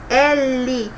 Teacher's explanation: L, a minha língua tem que ir lá no céu da boca.